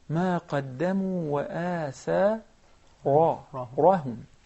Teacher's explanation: because the ra has a fatha, so it is permanently مفخمة, permanently fat.